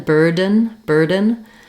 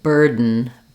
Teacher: what I'm doing is making an unreleased D sound. I'm releasing right into a syllabic N without using any vowel. And that sounds slightly different than burden.